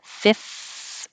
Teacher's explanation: going from the F to the TH, you have a lot of airflow going. You have to have your top teeth on your bottom lip